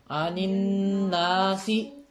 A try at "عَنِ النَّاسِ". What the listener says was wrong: ناسی آدھی آواز ہے، زیر کی آواز ہے، آپ کے پیش ہے کتاب میں؟ چاہیے غلط لکھی گئی ہے پھر، عن الناسی،